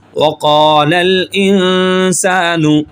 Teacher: اب یہاں پہ قاف کو موٹا کریں گے، ایک الف کے برابر کھینچیں گے